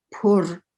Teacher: But when you have a long R, pur, it means full. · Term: gemination